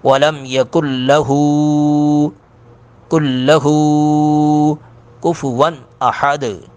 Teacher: اکثر لوگ اس پہ غلطی کر جاتے ہیں، لام کو لمبا کر جاتے ہیں، ہو کو چھوٹا کر جاتے ہیں۔ لام کو چھوٹا کرنا ہے، ہو کو لمبا کرنا ہے، ہو پر کھڑی زب الٹی پیش ہے۔